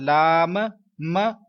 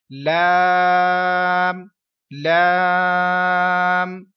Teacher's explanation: بیٹا اس letter کو پڑھتے ہوئے 3 سیکنڈ لمبا کریں اور ناک میں آواز مت جانے دیں اور اس کے آخر میں کلکلا نہیں کرنا ، کلکلے کی مراد لام م، اس طرح کی آواز بیٹا